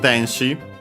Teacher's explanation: accent on the first syllable, so on the de.